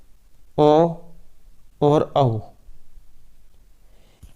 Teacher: ओ और औ, इनका जो उच्चारण स्थान है ये कंठ और ओष्ठ से होता है। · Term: कंठोष्टम